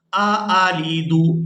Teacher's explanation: یا ویلتا، یا ویلتا آلیدو، یہاں پر دو حمزہ ایک ہی جگہ پر جمع ہو گئے ہیں تو ان دونوں کو ہم نے صاف آواز میں ادا کرنا ہے۔ آلیدو، یہاں پر پتہ چلنا چاہیے کہ ہم دو حمزہ ادا کر رہے ہیں۔